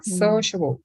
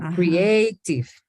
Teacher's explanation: Los dos son de 3 sílabas, pero uno tiene el estrés en la primera sílaba, sociable. Y el segundo en la segunda sílaba, como creative.